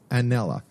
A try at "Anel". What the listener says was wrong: There's no A on the end. Anel.